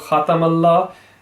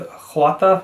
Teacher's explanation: the kha should have been just a kha sound because it has a fatha. There's no need to curve it.